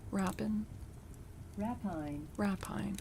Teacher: Rapine. Okay, so the emphasis is on the first syllable